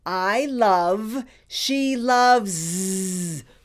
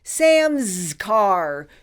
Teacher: where the S has a voice and sounds like a z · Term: grammar s